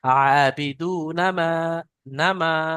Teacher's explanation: আবিদু না মা, না টান হয়ে যাচ্ছে, না টান হবে না।